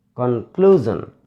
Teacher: This word is also ended in SION. So we should stress on the second syllable.